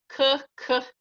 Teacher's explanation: the hard k, so it comes from the back of the throat